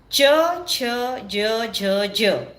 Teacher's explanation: यांना तालव्य म्हणतात कारण यांचा उच्चार करताना जीभ टाळूला लागते